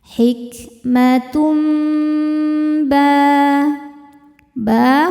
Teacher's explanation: Cara bacanya bunyi tanwin n diganti menjadi bunyi mim sukun m kemudian disertai dengungan tahan. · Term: iqlab